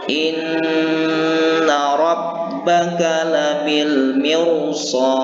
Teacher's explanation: Maka untuk kasus ini ro-nya ini harus dibaca secara tafkhim atau tebal, sekalipun didahului huruf yang berbaris kasroh.